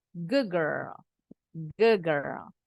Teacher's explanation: tapi D-nya berubah bunyi jadi G.